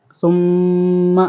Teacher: یہاں پر غنہ ہو رہا ہے، میم مشدد ہے